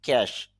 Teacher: আইপিএ দিয়ে খেয়াল করেন, খ এ খে, এরপর হলো এই যে এস এর মতো দেখছেন তবে একটু লম্বা, এটা হলো স সাউন্ড, তাহলে উচ্চারণটা হবে ক্যাশ। আর যেহেতু খ সাউন্ড শুরুতে আছে এই জন্য এক্সপিরেশন হবে